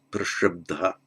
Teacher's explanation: So this, if the root ends in a bh and the past participle as normal begins or is ta, what happens is the b loses its aspiration, just becomes a b. The t becomes a d, and the loss of the aspiration of the b is compensated for by bd.